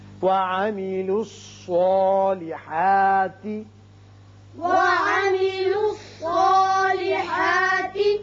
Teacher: صاد چونکہ حروف مستعلیہ میں سے ہے لہذا یہ پر پڑا جائے گا، اس کی وجہ سے جو اس کے اوپر کھڑا زبر قائم مقام الف کے ہے وہ بھی پر ہوگا۔